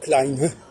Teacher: un E qui sert à prononcer la consonne et qui finalement ne s'entend quasiment pas